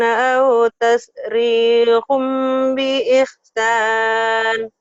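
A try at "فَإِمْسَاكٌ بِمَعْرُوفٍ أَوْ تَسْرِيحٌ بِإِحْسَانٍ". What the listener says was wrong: Tuh udah bagus, cuman ngagayemnya dihilangin ya. Suara ngagayem gitu. Harusnya fa imsakum bi ma'rufin aw tasrihum bi ihsan. Tapi udah bagus tadi, tinggal ngagayem kayak masih ditahan.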